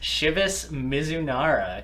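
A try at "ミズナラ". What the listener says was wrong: What was that pronunciation? Yeah, but you had some sort of weird inflection, like Mizunara.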